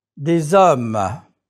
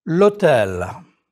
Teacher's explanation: The H muet, the mute H is not pronounced, but you link it to the article as though it were a vowel. L'hôtel. With l'hôtel, you are making an elision.